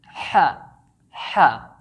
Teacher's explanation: So the letter Ha is pronounced from the middle of your throat, not the top part or the bottom part. It's pronounced using the middle part of your throat, like saying ha, ha.